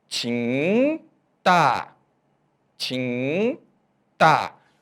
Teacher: O interessante é que na palavra tinta, você consegue sentir a vibração do tim, no final do som, saindo pelo nariz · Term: som nasal